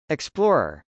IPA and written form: ɪksplˈɔːrɚ (explorer)